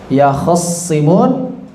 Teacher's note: Yahtasimun menjadi yakhissimun. Taknya diidghamkan kepada shad. Yakhissimun, kha-nya dikasrahkan.